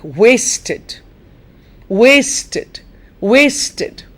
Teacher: if you take it in isolation as a word the syllable waste would take the stress